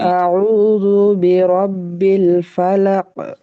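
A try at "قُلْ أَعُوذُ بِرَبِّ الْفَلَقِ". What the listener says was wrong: উম, একটু প্রয়োজনে এই বন্ধ থাকার সময়টাকে একটু বাড়াইয়া ফিরতি আওয়াজটাকে আর একটু মজবুত করা।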